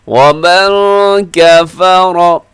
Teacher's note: نون ساکن کے بعد کاف ہے تو اخفا کیجیے گا